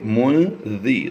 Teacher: زیری نہیں کریں گے بلکہ منذی، ذال باریک پڑھیں گے